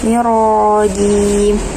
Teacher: untuk huruf ro di ta'awudz ini dibaca tebal ya, karena berharokat fathah